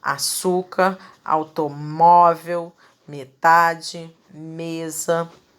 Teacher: a sua penúltima sílaba é que vai ser a pronunciada com mais força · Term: sílaba tônica, Paroxítona